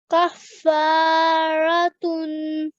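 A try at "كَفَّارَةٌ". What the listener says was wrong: Perfect. Good. Well done.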